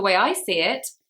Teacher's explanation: we emphasize I because it's about me. I'm giving my opinion.